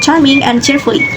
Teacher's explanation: This sound is shaped at the post-alveolar region, where the tongue comes near behind the alveolar ridge, and it's produced using an affricative manner, meaning it begins with a complete stop of airflow taken after by affricative release. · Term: affricate